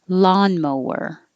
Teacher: Lawn, the vowel is ah, as in hot